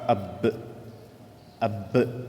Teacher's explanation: அந்த எழுத்துக்களின் மீது தஷ்தீத் வந்துவிட்டால் முதல் முறை சுக்கூனோடு உடன் இணைக்கும் பொழுது என்ன செய்ய வேண்டும்? கல்கலாவை மீதமாக லேசாக செய்ய வேண்டும்.